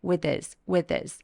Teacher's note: 주시고요 소리가 만나서 하면서 약간라고 된소리를 내주세요 연결해주시면 됩니다 PO 의 h 소리를 삭제해서 with this with this 하면서 부드럽게 연결해 주시면 돼요